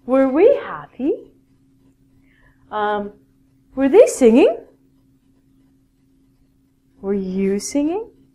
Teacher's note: at the end of the question in English it's a rising intonation